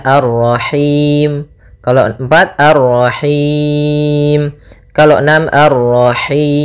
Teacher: boleh kita panjangkan hi-nya karena bertemu dengan huruf mad, boleh 2, boleh 4, boleh 6. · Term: mad arid lis sukun